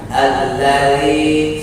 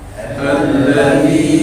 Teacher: Alladzi tidak hamas, tidak mengeluarkan nafas ditahan.